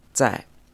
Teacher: this character which is pronounced say in the fourth tone · this Z or Z sound is almost like a soft TS sound in English, and it's in the fourth tone